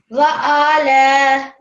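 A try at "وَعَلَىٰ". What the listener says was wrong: Don't prolong the ain.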